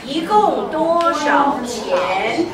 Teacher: So one changes to second tone